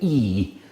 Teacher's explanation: when i say e all of you immediately know that my tongue is in the front of my mouth